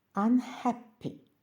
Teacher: якщо слово яке йде після префікса коротеньке то наголошуємо як префікс так і слово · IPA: [ʌn]